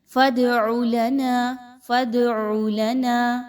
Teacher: اس دال کو آپ نے ہلا کر پڑھنا ہے، اس پر آپ نے رکنا نہیں ہے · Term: قلقلہ